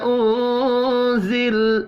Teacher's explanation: نون ساکن کے بعد زا ہے، اخفاء حقیقی ہوگا